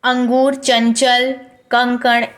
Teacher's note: इसके उच्चारण में नाक से आपके अधिक हवा निकलेगी, ना कि आपके मुंह से। मुंह से बहुत कम हवा निकलती है। · इस प्रकार के जो शब्द होते हैं उनसे आपके नाक से ज़्यादा हवा निकलती है अपेक्षा मुंह के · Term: अनुस्वार